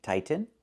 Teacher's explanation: You can say tighten and make a real T, tighten, or you can make a stop T, tight, and then go to the N, tighten, tightening.